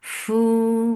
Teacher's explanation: for dhamma circle lip, make it 2 counts long.